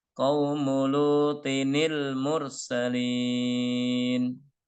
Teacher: Karena bertemu dengan alif atau hamzah wasol, maka ditambah dengan nun kasroh.